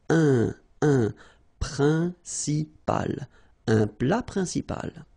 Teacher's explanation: En, remember, it's nasal, it goes in your nose.